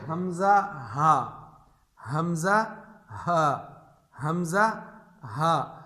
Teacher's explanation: جو سینے کی طرف کے حلق کا حصہ ہے اس سے حمزہ ہا